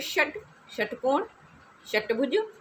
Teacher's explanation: जीभ देखो यहाँ टच करेगी, है ना, मूर्धा पे